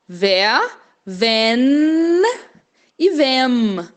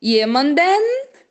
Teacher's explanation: Esse N tem que tocar mesmo estando lá no final da sua palavra